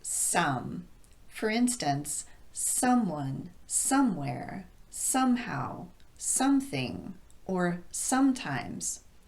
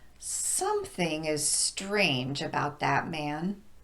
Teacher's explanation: native speakers place the emphasis on some. Usually, this is done by raising our pitch on that syllable.